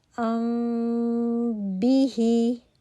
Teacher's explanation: आवाज जो है वह ज्यादा नाक से और थोड़ी मुंह से आएगी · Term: इफा शफी